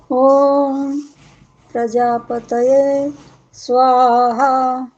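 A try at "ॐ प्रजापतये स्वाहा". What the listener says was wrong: रुक जाओ। तो आपने जो प्रजापति ये बोल दिया, क्या वहां बोला जाता है?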